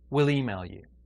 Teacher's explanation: The E in we and the 'll just gets pushed together and we say will.